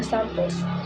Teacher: the first syllable sam is stressed and the second syllable pulse is not